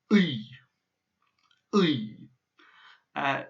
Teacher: it's like an oi, but your tongue, you almost try and swallow it. You try and get your tongue to go rapidly backwards down your throat as you say oi. So it's like oi, oi, a bit as if you're saying oi, oi, oi, oi.